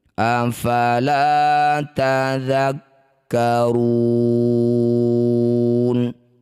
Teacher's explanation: Cara bacanya ru panjang ke 6 harokat, huruf terakhir sukunkan. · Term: mad arid lis sukun